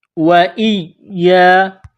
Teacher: حمزہ یا زیر ای یا الف زبر یا. حمزہ کو یا کے ساتھ ملانا ہے. وَإِيَّا. یا میں سختی کرنی ہے